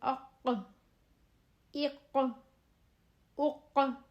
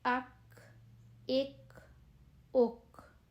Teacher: اق موٹا بھاری آواز جھٹکے والی اق. اور دوسرا کاف جو نرمی سے پڑھیں گے بغیر جھٹکے کے، حروف قلقلہ بھی نہیں ہے، اک اق موٹا کاف اور نرمی والا اک.